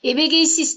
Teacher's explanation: Эбегейсиз дегенде менен и. Мында дагы бардык тыбыштар эринге карай эринсиз, тилге карай ичке. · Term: толук сингармонизм